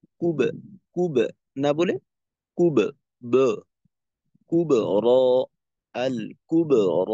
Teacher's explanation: কলকলা হরফের পূর্বের হরফে যদি পেশ হয় এবং বামে মোটা র হয়, তো ওই ক্ষেত্রেও কলকলা মোটা হবে।